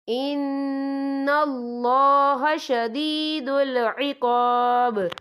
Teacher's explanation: یہ اللہ کا نام پر پڑھا جائے گا، کیونکہ اللہ کے نام سے پہلے زبر ہے